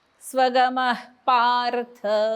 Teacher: विसर्गाच्या पुढे प आलाय म्हणून विसर्गाचा अर्धा उच्चार. स्वगम एक द्वितीयांश लिहून घ्यायचा.